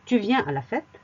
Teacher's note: au registre familier, il suffit à l'oral d'une intonation montante et à l'écrit d'un point d'interrogation. · On n'a que l'intonation montante qui montre qu'il s'agit d'une question.